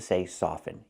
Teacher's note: never pronounce the T in the word soften with the verb soften the t is always silent now let's